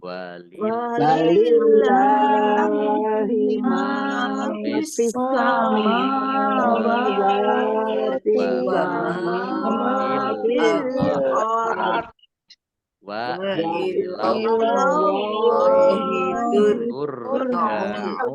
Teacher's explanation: Allahnya dibaca tebal karena harokat di depannya fathah. Lam fathah berdiri mat tobi'i, panjang 2 harokat.